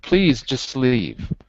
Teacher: I can move the S to the next word